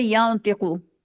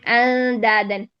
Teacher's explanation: تو یہ نون کی آواز زیادہ چھپتی ہے, تو زیادہ چھپنے کا مطلب ہے کہ 75% خلط ہے, اس میں ادغام ہے, اور 25% اس کی ظاہر ہو رہی ہے. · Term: اخفاء اعلیٰ